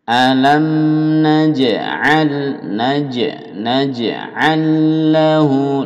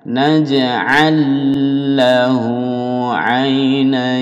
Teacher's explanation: lam dimasukkan lam didouble menjadi satu semuanya